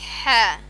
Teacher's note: হা গলার মধ্যখান হতে